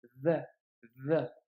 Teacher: tu dois le prononcer comme si tu avais un cheveu sur la langue. Donc c'est pas le del, c'est pas le zei non plus, c'est pas un Z, hein, vigilance, c'est un peu entre les deux.